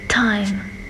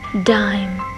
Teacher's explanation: Thì t là phụ âm vô thanh, nhưng mà d là phụ âm hữu thanh các bạn nha.